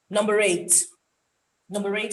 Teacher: you can use the linking r in expression which makes you more elegant more poised